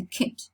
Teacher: when we produce the kit, our tongue is not tense. It's lax because it's short.